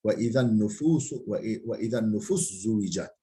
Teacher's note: Sin zada idgam olur